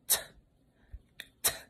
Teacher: So when we say t, t, make sure your tongue is pressing against your teeth. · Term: quiet tip tapper